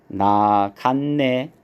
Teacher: 디귿은 뒤에 오는 니은의 영향을 받아서 니은으로 이렇게 발음이 돼요. 그래서 최종 발음은 이렇게 나갔네 비음화에 의해서 나갔네라고 발음이 된다 라는 거 요걸 이제 기억을 해 두셔야 되겠습니다.